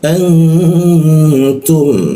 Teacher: nun mati bertemu ta didengungkan ditahan dua ketukan